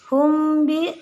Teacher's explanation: Ya, wa ma adalah mad tabi'i, kemudian hum bi mim sukun, hum bi mim sukun dengan ba. Ini adalah ikhfa syafawi.